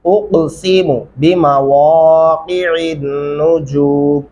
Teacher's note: اقسم، اقسم ایسے نہیں کرنا، اقسم بمواقع النجوم۔ واو پڑھتے ہوئے آپ کے ہونٹ گولائی شکل میں آنے چاہیے اور قاف کو گلے سے ادا کرنا ہے